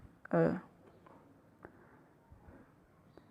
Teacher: मध्य स्वर होता है दोस्तों, जीभ के मध्य भाग से उच्चारित होता है